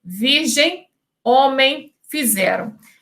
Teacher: o travamento nasal tende a ser suprimido